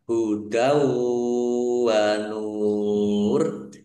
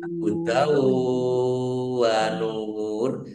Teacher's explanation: Hudaw wa nur. Fathah tanwin bertemu dengan huruf wawu, bacaan idgham bi gunnah masuk dengan mendengung yaitu mendengung wawu. ditandai wawunya ada tasdidnya, Wow.